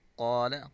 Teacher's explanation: وَإِذْ، ذال کو نرمی سے پڑھیں گے، قال قاف کو پر پڑھیں گے،